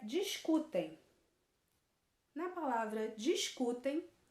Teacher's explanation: a penúltima sílaba é a mais forte a penúltima sílaba tenda mais forte ela é uma palavra paroxítona